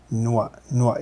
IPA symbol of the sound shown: mʷ